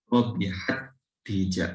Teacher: Begitu juga huruf ta ya, huruf ta yang sifatnya punya sifat hamas, ketika dimasukkan dengan ta lagi, hamasnya tidak terlalu tampak ya.